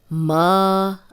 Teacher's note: اب دیکھیں یہ بہت مشکل ہو جاتا ہے جب ایک آخری حرف پہ ہم نے جزم لگانی ہو یا جزم لگی ہو اور پچھلے پہ بھی جزم ہو، تو پھر دونوں کی آواز آنی چاہیے۔ ما، الف مدہ ہے، 2 حرکات لمبا کریں گے